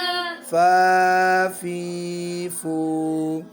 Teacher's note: فا میں نیچے والا ہونٹ ہے، اوپر والا نہیں واو میں دونوں ہونٹ گول ایسے کرتے ہیں. فا میں نیچے والے ہونٹ پہ کیا لگتا ہے؟ اوپر والے دانتوں کا کنارہ